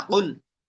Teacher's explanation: জিহ্বার গোড়া তার বরাবর উপরে তালুর সঙ্গে লাগাইয়া দুই নক্তাওয়ালা কফ